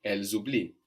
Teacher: the s between vowels sounds like z